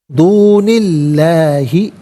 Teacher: اس میں اللہ کی حرف لام کو باریک کر کے پڑھا جائے گا۔